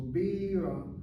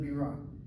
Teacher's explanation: that word Birah, where you emphasize the first syllable, Birah, rather than Birah.